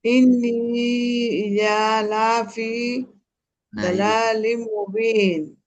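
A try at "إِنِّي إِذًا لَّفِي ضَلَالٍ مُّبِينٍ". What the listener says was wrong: হ্যাঁ, এখানে একটু ভুল আছে। সংযুক্ত হবে। ইজাল, হ্যাঁ, ইজাল্লাফি।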